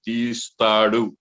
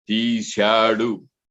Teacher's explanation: తీస్తాడు అన్నప్పుడు సా వచ్చింది, దంచె అక్షరం వచ్చింది. తీశాడు అన్నప్పుడు తాళవ్యాక్షరం శకారం వచ్చింది.